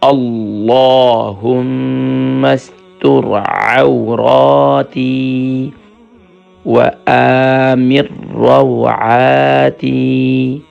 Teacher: دیکھیں اللہم، اکثر پڑھتے ہیں اللہم، اللہم نہیں ہے، اللہ کے لام کو منہ بھر کر پڑھیں گے